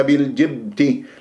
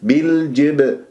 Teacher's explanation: بالجبتي اكسر الباء، بي مش بال، بالجبتي، بالجبتي وبالجبتي كسرة الجيم أيضا، واللام قمرية حكيناها لأنه جاء بعد حرف متحرك فقط وليس مشدد. الباء مقلقلة قلقلة صغرى في وسط الكلام، ما تمسكها